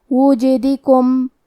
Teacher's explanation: حرف الجیم پہ جزم ہے، تو ہم حرف الجیم کو قلقلہ سے پڑھیں گے. قلقلہ کا معنی ہے حرف ساکن کو ہلانا، تو ہم یہ حرف کو ہلاتے ہوئے یہ کلمہ کو پڑھیں گے.